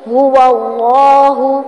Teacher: ہا کی پیش کو لمبا نہیں کریں گے. هو اللہ احد نہیں، هو اللہ احد، یہ والا ہا نکالیں گے.